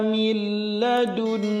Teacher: idgham bila gunnah, lamnya tidak digunnahkan, tidak ditahan lama